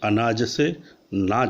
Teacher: स्वर के लोप में अनाज से नाज शब्द बना है